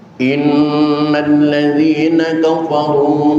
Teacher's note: tasdid yang ada di atas huruf nun berguna hukum gunnah musyaddadah, tahan selama 2 harokat. Tidak cukup dengan inna, tapi innalladzina remuk tapi tidak pecah.